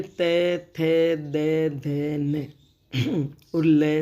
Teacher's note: जब हम इनका उच्चारण कर रहे हैं तो हमारी जीभ दांत को छू रही है या दांतों के नीचे जीभ आ रही है, और इन्हें कहेंगे हम दंत्य व्यंजन, है ना, दंत्य ध्वनियाँ।